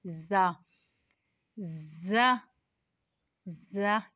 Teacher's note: की नोक और मुकाबिल के तालू से अदा होता है ज ज में सीटी भी निकलेगी यह सीटी वाला हर्फ है